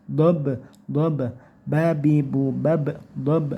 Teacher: ini bacaan qalqalah sugro yaitu memantul ya